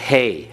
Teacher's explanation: The Hey, you have that breath coming out of your mouth as you pronounce it.